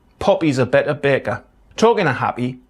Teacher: the P sound involves a glottal stop and closing of the lips simultaneously